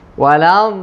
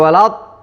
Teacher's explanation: Huruf dad kita bilang tadi harus kita tekan di makhraj dad, jangan tekan di kanan atau jangan tekan di depan. Di makhraj dad. Sisi lidah sama gigi kanan atau gigi kiri.